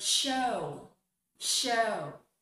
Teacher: The last sound of that base word is oo, it's the sound of W.